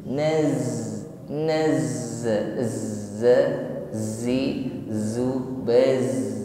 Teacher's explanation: Huruf zai sifatnya di sini shafir, terlebih-lebih ketika bertasydid, ya. Ditekan membacanya maka lebih tampak sifat shafirnya, yaitu suara desis.